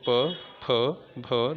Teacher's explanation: दोनों होठ मिल रहे हैं, इसीलिए हम इसको ओष्ठय कहते हैं · प वर्ग होठों की सहायता से बोला जाता है, इसीलिए इसको कहते हैं ओष्ठय।